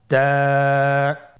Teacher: জিহ্বার আগা সামনের উপরের 2 দাঁতের গোড়ার সঙ্গে লাগিয়ে উচ্চারিত হয়